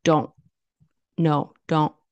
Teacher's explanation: It's when it kind of the air stops, like don't, no, don't. So it's like the T is a glottal stop.